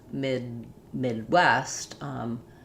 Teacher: So when D is in the middle of words, if it's followed by a consonant like Midwest, Midtown, it's going to be unreleased. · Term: unreleased D